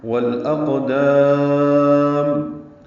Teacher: بن نواسی میں ادغام شمسی کیا تھا، والاقدام میں لام ساکن پہ اظہار قمری کر رہے ہیں، اور اقدام میں قاف ساکن پہ قلقلہ ہے، دال کو لمبا کرنا ہے، میم ساکن پہ اظہار ہوگا وقفاً.